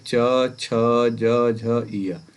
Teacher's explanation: इनका उच्चारण स्थान क्या होगा, तो तालु होगा।